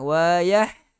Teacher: Pangkal tekak keluar huruf ha dengan huruf hamzah.